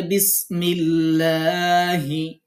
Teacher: আমরা দ্বিতীয় নিয়ম জানবো যে আল্লাহ শব্দের লাম কখন চিকন করে পড়তে হবে। আল্লাহ শব্দের লামের পূর্বে জের হলে তখন লাম অক্ষরটি বারিক মানে পাতলা বা চিকন করে পড়তে হবে।